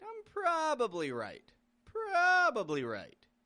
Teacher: notice how in this context I stretch out that pra